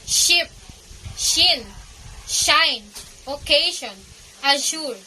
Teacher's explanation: Palato-alveolar sounds occur somewhat farther in the mouth than the alveolars. The sound is made through placing the blade of the tongue at the hard palate behind the alveolar ridge. The tip of the tongue is hardly behind the alveolar ridge.